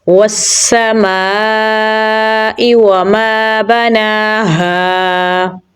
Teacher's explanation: नून को लंबा पढ़ेंगे क्योंकि इसके ऊपर खड़ी ज़बर है। हा गले के निचले हिस्से से निकालेंगे · मीम को लंबा पढ़ेंगे क्योंकि आगे अलिफ मद्दा है।